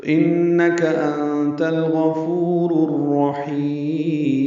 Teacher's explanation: ہا وسط حلق سے ادا کریں گے، لمبا کریں گے اور میم ساکن کر دیں گے، وقفاً مد عارض سکون بنا کے میم ساکن پہ وقف ہو جائے گا، تو انک انت الغفور الرحیم۔ · انک میں نون مشدد پہ غنہ ہے، کاف پر زبر ہے، جلدی پڑھیں گے